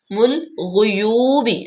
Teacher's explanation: جو ہے اس کو لام میں ملائیں گے، مل غیوبی، غین غین جو ہے وہ کرکراہٹ پیدا کرتے ہیں جب غین کو ادا کرتے ہیں ، خا اور غین کو، یوبی واو مدہ لمبا کریں گے،